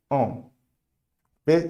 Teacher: Em vez de você fazer o nasal com a boca aberta, você vai fechar um pouco mais a boca e a sua língua, ela não vai colar no céu da boca